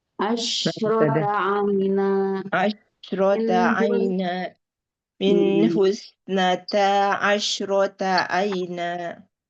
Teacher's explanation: Suaranya itu stabil, jangan turun pas terakhirnya.